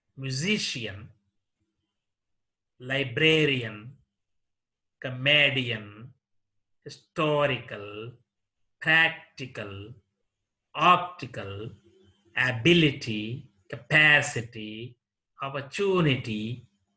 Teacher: Words that end in IAN, ICAL, and ITY take the stress on the anti-penultimate syllable. Anti-penultimate means the third syllable from the end.